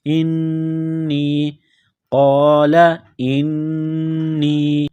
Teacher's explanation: حمزہ کو نون کے ساتھ پلس کرنا ہے، نون مشدد ہے، غنہ کریں گے